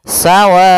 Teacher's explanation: maka di sini panjang wa adalah empat harakat maka kita panjangkan dulu wnya sepanjang empat harakat baru dibaca onnya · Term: mad wajib, mad wajib muttasil